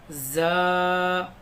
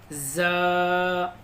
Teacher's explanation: زال زال را زا. اس زا کو تھوڑا موٹا پڑھیں گے، زبان کی نوک کو اوپر کے تالو میں لگائیں گے.